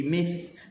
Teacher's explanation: Mithlu huruf tha hujung lidah di hujung gigi, mith, lepaskan suara dengan angin